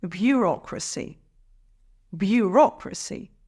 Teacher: emphasize the second syllable